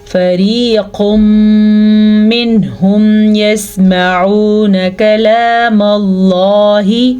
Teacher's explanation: نون ساکن کے بعد ہا ہے تو اظہار کا قاعدہ ہو رہا ہے